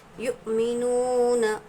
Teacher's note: یؤمنون میں دیکھیں گے حمزہ ساکنہ کے پڑھنے میں جھٹکا ہوگا، جب بھی حمزہ پر جزم آئے گا تو حمزہ ساکنہ کے پڑھنے میں ہم کو جھٹکا دے کر پڑھنا ہوتا ہے۔ یؤمنون، واو ساکن سے پہلے پیش واو مدہ ہوگا، واو مدہ کو ایک الف کے برابر کھینچ کر پڑھیں گے۔